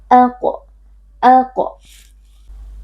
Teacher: Fa'aqa, huruf qaf, huruf tebal kita baca dengan mengangkat pangkal lidah, lalu karena qaf termasuk huruf qalqalah, maka di sini berlaku qalqalah sughra karena ada qaf sukun yang posisinya berada di tengah-tengah kata atau di tengah-tengah kalimat dibaca dengan suara memantul